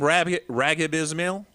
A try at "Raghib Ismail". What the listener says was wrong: Raghib Ismail, yeah. The G's silent. It's Raghib. It's Yes, Raghib.